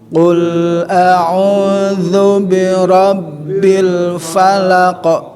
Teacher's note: Kalau zu au, ya itu jelas kan, ada ain ada waw, dua huruf kan, berikan dia dua, apalagi si waw itu mengandung u, maka dua ketukan, jadi dua harokat gitu. Mantobi'i yang rawan yaitu zu pendek, bi juga pendek, ro masuk ke ba